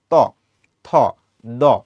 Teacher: যখন তুমি ত উচ্চারণ করতে যাও তখন তোমার জিভের ডগাটা উপরের পাটির দাঁতের সাথে যুক্ত হয়ে উচ্চারিত হয় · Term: দন্তব বর্ণ